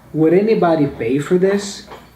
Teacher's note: I don't really pronounce the D's and the T's here as a D and a T, but I make them as a ra ra ra